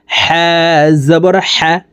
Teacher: হা হরফের উচ্চারণ হলকের মধ্যখান থেকে পড়তে হবে, কারণ হার মখরাজ হলকের মধ্যখান থেকে হবে।